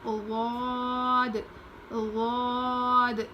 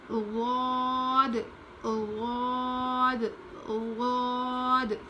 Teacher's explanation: اس کے بعد ہے غاد، غاد، یہ بھی موٹا پڑھتے ہیں اور زبان کی کروٹ کو اوپر کے داڑھ میں لگا کر پڑھتے ہیں